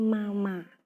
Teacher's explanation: Konsonan yang keluar pertama adalah konsonan bilabial hambat dan bilabial nasal.